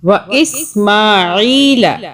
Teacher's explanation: یہ عین ہے, اس کو یہ حروف حلقی ہے عین. ہاں اس کو ذرا حلق سے نکالیں گے اس کی ساؤنڈ کو